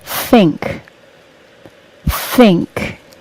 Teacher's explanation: and think has an unvoiced th sound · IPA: θ